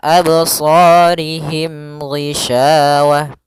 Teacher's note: pada lafal sa ada mad tabi'i dan sa-nya harus kita tebalkan. Kemudian rihim, ya, absarihim ghishawah.